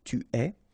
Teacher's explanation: you get this ES, but then phonetically it's est, alright, quite open